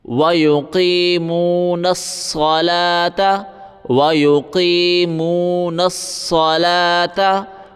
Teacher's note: وَيُقِيمُونَ الصَّلَاةَ نون کو صاد کے ساتھ ملائیں گے وَيُقِيمُونَ الصَّلَاةَ واو نہیں پڑھیں گے صلوات اس طرح بالکل نہیں پڑھیں گے